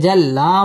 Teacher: আলিফ টেনে পড়তে হবে। জাল্লা মদ্দে তাবাঈ এক আলিফ টেনে পড়তে হবে।